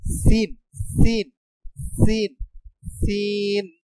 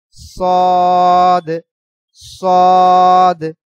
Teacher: উচ্চারণ আমাদের একটু মোটা উচ্চারণ হবে সদ সদ সিনের মতন না সিন হলো পাতলা উচ্চারণ চরই পাখির মতন ওই যে স ছ উচ্চারণ হবে আর সদ সদ উচ্চারণ হবে মোটা উচ্চারণ